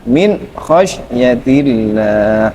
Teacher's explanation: Gin itu kan dinamakan Idhar bacaan idhar maka apa Idhar itu Idhar itu tidak boleh ada gunahnya